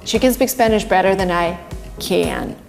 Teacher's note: We even emit a, and this is what native speakers do in weak forms. She can speak Spanish, but the next can is strong.